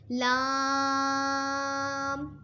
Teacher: لام زبان کا کنارہ اور زواحق سے ثنایا تک کے مسوڑوں سے ادا ہوتا ہے۔